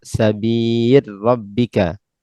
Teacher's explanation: adapun lam fa adghamaha fi ra, maka diidghamkan ke dalam ra